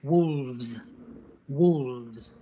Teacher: So 1 wolf becomes 2 wolves. Notice how we need to use the slightly vibrating V, the V, and the yes sound like a buzzing Z sound.